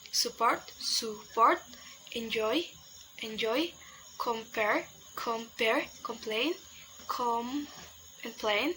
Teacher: The stress is mostly about 80% put on the second syllable.